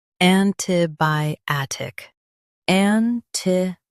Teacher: Stress by and keep tick light.